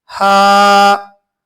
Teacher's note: यह हल्की हा है। इसको खाली मुंह से पढ़ेंगे। · یہ ہلکی ہا ہے یعنی چھوٹی ہا ہے، اس کو خالی منہ سے پڑھیں گے ہا، ہا، ہا، اس طرح پڑھیں گے اور یہ حلق سے نکل کر ہا، ہا، اس طرح پڑھی جائے گی۔